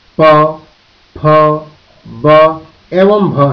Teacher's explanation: नीचे का होंठ ऊपर के होंठ को छूता है एवं वाक प्रवाह की गति में बाधा उत्पन्न करता है। दोनों ओष्ठों द्वारा निकलने वाली ध्वनियां हैं प, फ, ब एवं भ हैं।